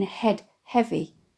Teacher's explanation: the alliteration of the aspirated /h/ in “head heavy”, which seems to evoke a sigh